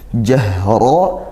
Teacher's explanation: ngalir suaranya dan desis nafasnya juga karena huruf ha sifatnya hamas, itu mendesiskan nafas. Jahra, ra-nya fathah dibaca tafkhim tebal.